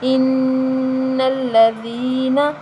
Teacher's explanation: حمزہ نون زیر ان، نون لام زبر نل، ان لام زبر لا، ان لا، ذال یا زیر ذی، ان الذی، نون زبر نا، ان الذین، نون مشدد ہے، اس پر ہم غنہ کریں گے، ذال کو نرم پڑھیں گے۔ یہاں یا مدہ ہے، یا ساکن سے پہلے زیر آ رہی ہے تو یا مدہ، ہم اس کو ایک الف کے برابر لمبا کریں گے اور حرکت کو لمبا نہیں کریں گے، ان الذین، ٹھیک ہے۔